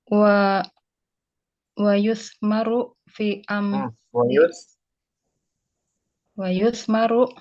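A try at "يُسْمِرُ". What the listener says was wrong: bukan. Jangan kalau yusmar itu majhul. Yuktabu. Majhul ya. Dari asmara yusmiru.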